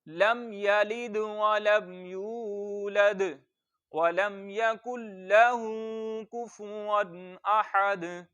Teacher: صرف 2 جگہ پر لمبا کرنا ہے، ایک ہا کو لمبا کرنا ہے اور ایک یا کو لمبا کرنا ہے. یا کو اس لیے لمبا کرنا ہے، یہاں پر واو مدہ ہو رہا ہے، اور ہا کو اس لیے لمبا کرنا ہے، یہاں پر الٹی پیش ہے، اور واو مدہ کو اور الٹی پیش کو ایک الف اتنا لمبا کرتے ہیں.